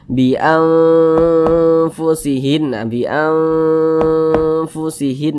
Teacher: Nah, kemudian didengungkan, jadi suaranya itu kita tahan, kita panjangkan sejenak. Panjangnya 2 harokat.